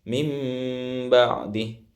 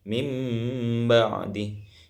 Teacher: Contohnya mim ba'di, yang mana cara bacanya di sini didengungkan, ya. Yang mana nun di sini berbunyi dengan mim, berbunyi sama dengan mim, seakan-akan kita membaca mim ketika membaca iqlab.